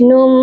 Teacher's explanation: نون کو میم مشدد کے ساتھ جب ملائیں گے تو غنہ بھی کریں گے